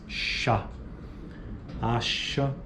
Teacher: Próxima. Fricativa alveopalatal desvozeada